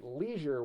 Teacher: You'd use the long E sound in leisure. So many Americans say leisure with the long E sound